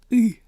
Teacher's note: It is the letter U. And it's most like our E or I, but it's kind of somewhere in between.